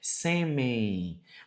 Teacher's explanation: Veja que esse N traz uma ideia de I